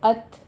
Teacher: ات میں 5 کاؤنٹ کرنے ہیں، مد متصل واجب ہے، اور ات یہ تا پر ہمس کرنا ہے، تا ساکن ہے